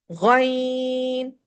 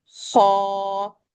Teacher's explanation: غین میں غا کی غرغرے کی آواز ہے، خا میں خراٹے کی آواز ہے.